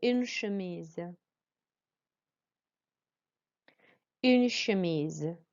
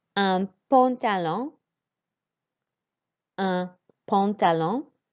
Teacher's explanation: the U makes a real U sound, as opposed to un here, the nasal, like an sound of un.